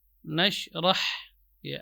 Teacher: ha keluar dari tengah-tengah tenggorokan